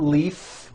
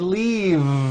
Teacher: leaf with an unvoiced F I should have said leave with a voiced v sound